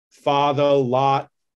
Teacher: father and lot are pretty close right they may have a little bit of rounding to them